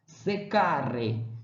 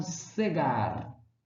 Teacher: o som desse C, do K, no caso, né, antes de A ou U, tinha uma tendência de passar para G